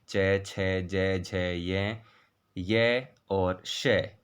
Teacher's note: ये वर्ण व्यंजन वर्ण तालु से बोले जाते हैं